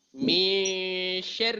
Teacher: lidah berada di pertengahan, tidak menyentuh ke huruf shin, tidak juga menyentuh ke huruf nun. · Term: ikhfa hakiki